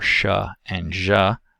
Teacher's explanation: there is a narrow constriction between the tongue blade and the hard palate